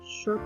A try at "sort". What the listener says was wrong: So I need you to focus a bit more on the letter S sound. Okay. Take away the H because it sounds a bit like short.